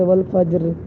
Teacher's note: را کی آواز تھوڑی باقی ہے، زیر کی آواز، تو یہاں پر اس کو ہم باریک ہی پڑھیں گے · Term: روم